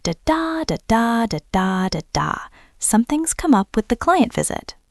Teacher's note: The important words are something, up, client, and visit. The other words are small and quick.